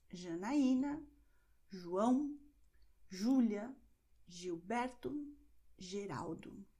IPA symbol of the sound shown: ʒ